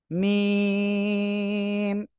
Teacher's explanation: দুই ঠোঁটের বাইরের অংশ বা শুকনো অংশ থেকে অক্ষরটা উচ্চারণ হয়।